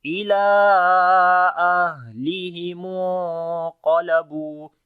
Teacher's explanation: So you long 3 to 4 seconds, and on the ha we make hams quality, the continuation of our breath.